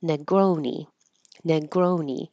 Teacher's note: I didn't rewrite the whole sentence, but I did write Americans are usually going to make this ne instead of ne, make it a no, Negroni. But ne, no, it's not stressed, so it'll be very short.